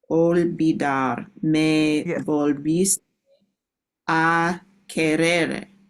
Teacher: the V sound is more like a B